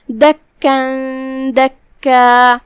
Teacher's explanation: دکا پہ ہم رکیں گے تو مد الف سے رکیں گے کیونکہ تنوین زبر پہ ہم مد الف سے رکتے ہیں تو ہم اپنی آواز 2 مد کے برابر لمبی کریں گے اگر ہم یہ آیت پہ رکیں گے تو.